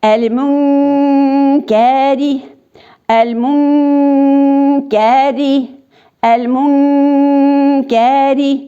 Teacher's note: Менә шушы qaf хәрефе белән һәм каф хәрефе белән укыганда безнең телебез артка китә. Чөнки каф белән qaf хәрефе ул безнең телебезнең төбеннән чыга. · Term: ихфа кагыйдәсе